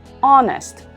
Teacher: la h al principio pero la h no se pronuncia